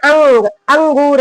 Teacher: अंग जो है नाक से बोला जा रहा है। तो अनुस्वार क्या है, नाक से बोला जाएगा, इसका उच्चारण स्थान।